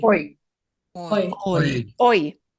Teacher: the letter H does not get pronounced. It is truly silent.